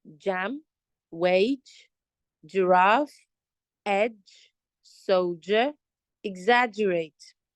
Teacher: this sound J is also voiced, meaning there's a vibration on your throat.